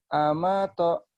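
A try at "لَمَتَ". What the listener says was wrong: Kamu lupa terus. Lupa terus. Ingat ya, jangan alif ya. Kalau alif nggak mungkin gabung. Alif nggak mungkin gabung tuh. Kalau udah alif nggak bisa nyambung dia.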